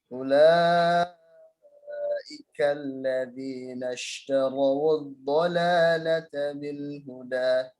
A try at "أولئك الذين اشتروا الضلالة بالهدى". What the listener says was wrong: Tarawu, wawunya dibaca ya, wawunya dhammah itu. Jadi setiap lin ketemu wasol itu wawunya atau iyanya dibaca.